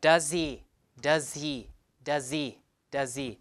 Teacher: pronounced with a schwa. Pronouns like he, him, or her, and who, the H tends to be gone. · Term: H is gone